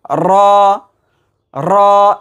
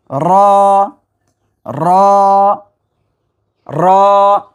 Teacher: রয়ের মাখরাজ হলো জিহ্বার আগার উল্টা পিঠ, তার বরাবর উপরে তালুর সঙ্গে লাগায় একটু ভাইব্রেশন হবে। র র এরকম র র র।